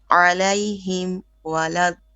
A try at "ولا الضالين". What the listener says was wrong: Make your da a bit more heavy. ولا الضالين.